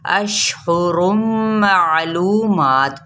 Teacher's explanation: مد اصلی بالواو کا قاعدہ ہو رہا ہے، جس کو ایک الف یا 2 حرکت لمبا کریں گے